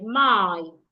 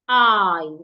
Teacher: you need to go slowly because it has a glide vowel